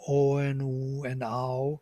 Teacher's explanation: These are the modifications of ah. Ah modified by lips, ah is becoming o and u and ow.